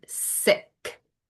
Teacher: I feel my voice is not on and I can feel that sound all the way in the back.